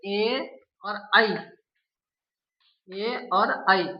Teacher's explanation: ये ए और आई तालु और कंठ दोनों से मिलकर के बोले जाते हैं।